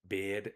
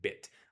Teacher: A better example would be mm, cat and cad, or bid and bit. I literally pronounce the I noise for a longer time in the word bid than I do in bit.